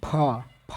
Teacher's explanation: फ हवा निकल रहा है ना? यानी कि महाप्राण व्यंजन है।